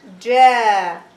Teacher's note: it is a long vowel Alif. So it's going to be Ja, two haraka.